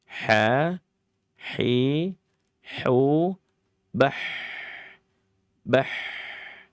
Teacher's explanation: ha ya dibaca dalam keadaan rakhawah. Dia harus wajib terseret. Ha hi hu bah bukan bah. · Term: rokhawah